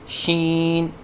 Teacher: بعض بچے شین کی ادائیگی کے وقت آواز ناک میں لے کے جاتے ہیں